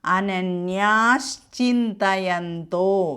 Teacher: പദഛേദങ്ങൾ അനന്യാഹ ചിന്തയന്തഹ മാം അപ്പ അവിടെ അനന്യാശ ചാക്ക് മുമപ് വിസർഗം വന്നതുകൊണ്ട് ആ വിസർഗം ലോപിച്ച് അവിടെ ശവരും